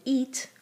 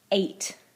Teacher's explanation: I change the vowel sound. Ate, I make it shorter and I make it lower. And it's the same thing with drink.